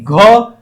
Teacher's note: स्पष्ट संवार नाद घोष कंठ ध्वनि घ